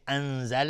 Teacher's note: نون ساکن به زای اخفای حقیقی